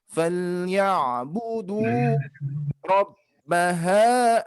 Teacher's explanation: ada domah bertemu waw termasuk mad 2 harokat, berarti kita harus ayunkan 2 harokat ya.